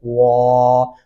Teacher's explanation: الف کی وجہ سے آپ آواز کو لمبا کریں گے، واو زبر الف وا، اور واو جو ہے وہ ہونٹ گول شکل میں آئیں گے تو تبھی واو درست تلفظ میں ادا ہو پائے گا